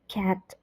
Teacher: a in cat is a low front unrounded vowel